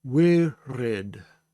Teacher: when I say the resh, I am saying that at the back of my throat